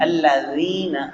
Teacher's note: الذین نرمی کے ساتھ ادا کریں گے، زبان کا کنارہ دانتوں کے کنارے کے ساتھ لگے گا